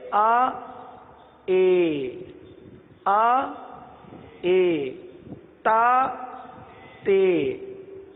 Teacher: زبر کو زیر کی طرف مائل کرنا